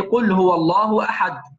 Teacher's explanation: كلمة أحد في قوله قل هو الله أحد عند الوقف عليها فإنها قلقلة كبرى